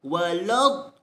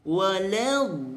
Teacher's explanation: la di situ kena diringankan, dinipiskan. Waladh, jangan dibaca walad, salah.